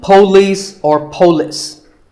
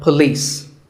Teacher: it's pa and lis with the stress on lease